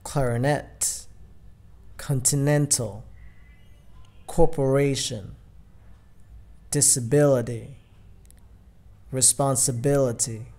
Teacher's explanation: Trọng âm ở âm tiết thứ ba trở lên